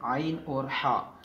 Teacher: आइन और हा गले के दरमियान वाले हिस्से से अदा होते हैं। हमारी हलक का जो दरमियान वाला हिस्सा है आइन हा वहाँ से अदा होते हैं।